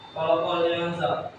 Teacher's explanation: Alasannya nun sukun bertemu sin. Cara bacanya samar dan dengung serta ditahan. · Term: ikhfa